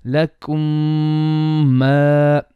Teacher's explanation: the mim gets merged into the other mim. So both mims become one mim, and you lengthen the ghunna for 2 beats or 1 second. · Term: Idghaam Shafawi